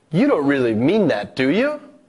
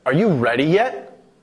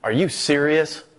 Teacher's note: the fall rise pattern this indicates surprise and often disagreement but above all it indicates that the speaker wants a person to respond or confirm